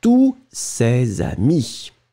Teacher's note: And you don't pronounce the final S.